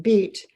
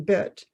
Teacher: position and then the short eye showing the more relaxed position there is a more tension in the mouth position when saying the long e sound